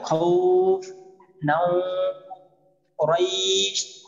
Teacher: মধ্যে লিন এক আলিফ টেনে পড়তে হয়